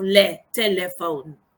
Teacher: It is a central vowel, so that means that the center of the tongue is raised, and this is the difference or another difference between this vowel and the rest of the vowels, that the height of the tongue can differ depending on the context where it occurs.